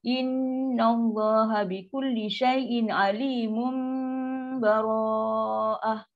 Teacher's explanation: Tanwin mim kecil ni, jumpa dengan huruf ba, adalah iklab. Kita akan baca dengung dua harakat. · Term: hukum iklab